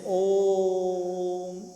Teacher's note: प्लुत स्वर जैसे ओम, तो दीर्घ समय लग गया ना 3 गुना, एक स्वर का जो ह्रस्व था उसका 3 गुना हो गया, इसीलिए त्रिमात्रिक हो गया और ये प्लुत स्वर कहलाता है